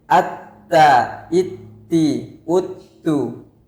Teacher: Tidak ada aliran suara ketika ta diberi tasydid. Itu sifat huruf ta. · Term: syiddah